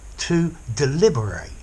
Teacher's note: So notice the ending of the adjective deliberate, it's unstressed, whereas the verb to deliberate, I'm stressing the end of the word